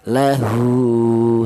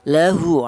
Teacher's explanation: Ini juga harokat dhammah, tapi kalau harokat dhammah cara penulisannya terbalik ini, itu untuk Al-Quran cetakan Indonesia ya. Ini menunjukkan bahwa huruf ha ini dipanjangkan satu alif atau dua harokat atau dua ketukan. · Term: masalah qasirah